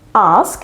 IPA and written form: ɑːsk (Ask)